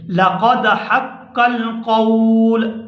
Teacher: اگر ہم یہاں پر وقف کریں گے اس کے اوپر قول کے اوپر تو لام کے اوپر پیش نہیں پڑیں گے بلکہ لام کے اوپر بھی ہم جزم پڑیں گے۔ یہ دیکھیں لَقَدْ حَقَّ الْقَوْلُ، یہاں پر ہم نے سانس کو ختم کر دیا، ہم یہاں پر رک گئے ہیں تو ہم اس کو یہاں پر ساکن کر دیں گے۔